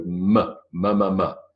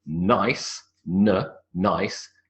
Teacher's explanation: Notice though that the m is from the lips and the n is from the alveolar ridge.